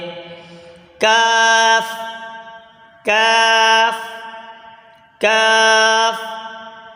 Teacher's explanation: जबान की जड़ और तालो के सख्त हिस्से से अदा होता है · کاف زبان کی جڑ اور تالو کے سخت حصے سے ادا ہوتا ہے۔ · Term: काफ